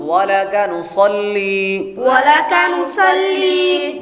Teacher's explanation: نصلی یہاں پر نون کے بعد صاد حروف مستعلیہ میں سے ہے, اس کو پر پڑھیں گے. اور آگے لام بریک ہے.